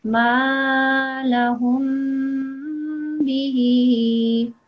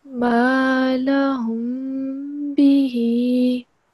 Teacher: One thing that you need to remember is when there is a meme that's followed by a ba, a meme with the sukun that's followed by a ba, then you have to make a nasal sound for this. ما لهم به for 2 seconds.